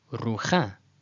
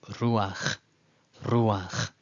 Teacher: This is the instance where the patach is pronounced before the final letter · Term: stolen patach